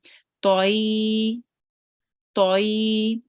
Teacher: remember ta is a thick letter, so we do make it round as well.